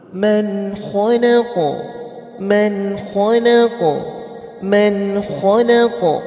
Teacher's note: Sifatnya apa huruf qaf itu? Huruf qaf itu sifatnya qalqalah. Jadi memantul.